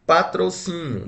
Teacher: Está acentuada aqui na penúltima. Então, nós falamos que ela é uma paroxítona.